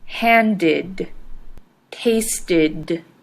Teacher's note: The ed in handed and tasted ended with an id sound.